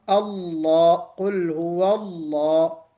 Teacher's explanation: واو کے اوپر چونکہ فتحہ ہے زبر، اس لیے ہم اللہ، قل هو اللہ موٹا پڑھیں گے